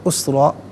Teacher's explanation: دو زبر کی تنوین ہے را پر، تب بھی پر پڑھا جائے گا، وقف میں الف سے چینج ہو جائے گی، اس وقت بھی را کو پر ہی پڑھیں گے